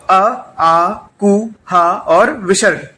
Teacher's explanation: यानी इतने जो वर्ण हैं इनका जो उच्चारण स्थान है वो है कंठ।